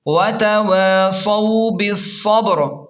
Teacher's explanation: بالصبر، را زیر ری، بالصبری. وقف کی صورت میں را ساکن ہو جائے گا اور را کو موٹا بھی پڑھیں گے